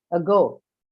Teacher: the vowel sound you see in the beginning of the word ago is a schwa sound and it is always unstressed · you won't have the stress on the uh first part right the stress will fall on the second one that is go